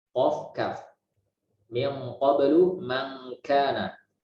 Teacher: Yang kedua yang paling jauh yaitu huruf lidah yang paling belakang, yaitu huruf qaf, dan kedua huruf kaf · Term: ikhfa